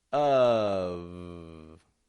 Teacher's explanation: Having my bottom lip, lightly touching my teeth, letting the sound flow out.